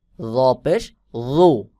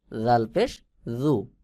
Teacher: র উচ্চারণ হবে হলো আওয়াজ মোটা এবং গোল মতো হয়ে উচ্চারণ হবে